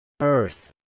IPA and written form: ɜrθ (Earth)